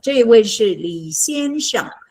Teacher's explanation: And Sheng is neutral, or in Taiwan, just first tone.